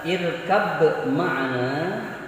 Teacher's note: Kalau dalam tajwid yang kita baca, yang kita pelajari namanya idgham mutajanisain ya. Karena huruf ba dan huruf mim itu makhrajnya sama, tempat keluarnya sama, yaitu pada bibir, pada ujung bibir.